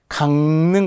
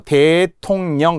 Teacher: 비음이 아닌 소리가 비음으로 변한다 비음은 니은 미음 이응을 말합니다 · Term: 비음화